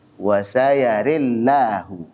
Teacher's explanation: Karena ra sebelumnya adalah ra imalah. Kata Allahu, lamnya dibaca tipis. Kenapa? Karena sebelumnya ada ra imalah, ri.